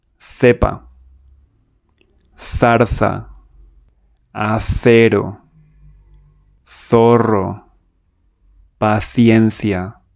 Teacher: C before E or I and theta. We pronounce them like the th in teeth or throw. Put your tongue between your teeth and blow air.